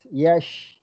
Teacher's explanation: Dia tafashi huruf shin tu.